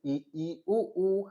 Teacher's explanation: संवृत का मतलब होता है बिल्कुल कम खुलना, ना के बराबर। देखो, ई उ मतलब इतना से हिल रहा है, इतना से ई उ, है ना?